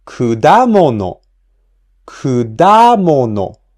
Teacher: Kudamono has the accent on the second mora, da. So we pronounce the second mora at a higher pitch.